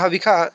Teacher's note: यहाँ हविखा, ये आप लोग हविषा पढ़ते होंगे। तो हविषा जो है वो वेद के हिसाब से अशुद्ध उच्चारण है, हविखा जो है वो शुद्ध उच्चारण है।